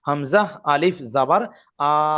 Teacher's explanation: তাহলে এই বাটা হলো আলিফ মাদ্দা। এই আলিফ মাদ্দাকে এক আলিফ টান দিয়ে পড়তে হবে।